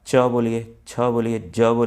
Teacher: तालु से च छ, आप खुद बोलिए, आपकी जीभ दांत के ऊपर वाले खुरदरे भाग को छुएगी, उसी को तालु कहते हैं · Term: तालव्य